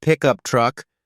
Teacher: if you're using it as a noun like pickup truck the stress is on the first part pick